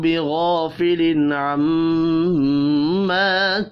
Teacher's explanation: تنوین کے بعد حروف حلقی ہے، یہاں پر اظہار حلقی ہوگا، غنہ نہیں ہوگا